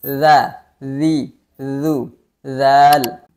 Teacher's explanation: lidah menyentuh ujung gigi seri atas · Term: huruf dzal